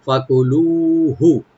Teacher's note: ফা ওপেন থাকবে, কাফে কোনো টান নাই, লু একালে টানবেন, হাতে কোনো টান নাই